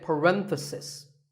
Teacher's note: If you talk about just one bracket, you say parenthesis. The stress is on ren.